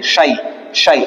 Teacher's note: ইয়া সাকিন ডাইনে জবর ইয়া লিন। ঠিক আছে, ইয়া লিনকে জলদি পড়তে হয়